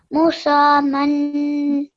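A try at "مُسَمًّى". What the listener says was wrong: Okay, once more, make sure you do this meme gunna here properly, okay? Good, because you have to make a 2-second nasal sound when you join the letters together.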